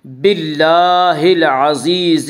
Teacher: باللہ میں اللہ کا لام باریک پڑھا جائے گا